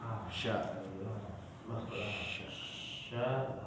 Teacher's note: Sya tengah lidah di langit-langit. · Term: Makhraj shin